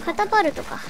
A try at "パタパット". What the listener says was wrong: パ タ パ ッ ト ね 。 パ ル ト じ ゃ な い 。 パ タ パ ッ ト こ こ 。